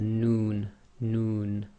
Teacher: the tip of the tongue pressing on the front hard pallet. Um your your lips actually go a bit round with the noon